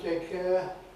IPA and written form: ˈteɪk ˈeə (Take care)